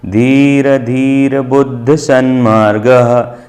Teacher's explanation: एक बार पूरा रहा है धी के बाद, फिर दूसरे बार जो धी है उसके बाद आधा रा बोलना है।